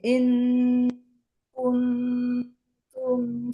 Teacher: Kalau nun sukun ketemu kaf langsung ke eng, Bu. Baru yang kuntum, nah itu hanya menjauhkan sedikit posisi ujung lidah dari gusi atas.